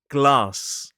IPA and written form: ɡlɑːs (glass)